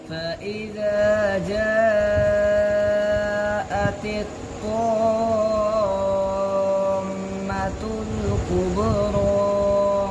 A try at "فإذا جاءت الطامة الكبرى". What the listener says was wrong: अब तो नाक में पढ़ रहे हैं